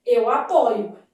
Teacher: no verbo apoiar, a forma de primeira pessoa do presente do indicativo apresenta a letra O aberta